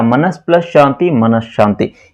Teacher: ಸಂಧಿ ಪದದಲ್ಲಿ ಸಕಾರದ ಬದಲಾಗಿ ಶಕಾರ ಆಗಮವಾಗುವುದು ಅಥವಾ ಬರುವುದನ್ನು ನಾವು ಚುತ್ವ ಸಂಧಿ ಅಂತೇಳಿ ತಿಳ್ಕೊತೀವಿ